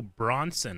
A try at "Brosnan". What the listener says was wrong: Brosnan. Well, in that clipped tweet, the S is before the N.